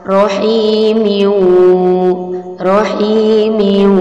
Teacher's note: maka akan menjadi idgham bi gunnah karena ada tanwin bertemu salah satu huruf idgham bila gunnah yaitu waw.